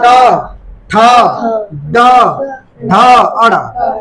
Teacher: ट वर्ग को स्पर्श व्यंजन भी बोलते हैं या इसको बोलते हैं मूर्धा से बोलते हैं